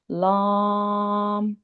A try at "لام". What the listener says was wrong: لام کو موٹا نہیں کریں گے، لام باریک.